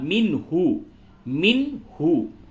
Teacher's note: وَلَسْتُمْ، تُنْفِقُونَ نون ساکن کے بعد فا ہے، اخفا ہوگا، اور نون ساکن کے بعد ہا ہے، حروف حلقی، اس جگہ پہ اظہار ہوگا